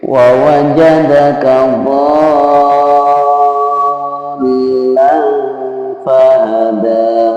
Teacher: Cara membaca dhallan fahada di situ adalah panjang dulu 6 harokat, kemudian ya ditasdidkan, dimasukkan ke dalam huruf lam di depannya, ya. Jadi cara membaca mad lazim musaqqal kalim itu adalah dipanjangkan dulu ya hurufnya, kemudian ditasdidkan kepada huruf yang di depannya.